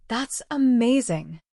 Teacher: If my friend tells me she won the lottery, I would not say that's amazing in a flat, robotic voice. Instead, my voice would rise and fall with excitement.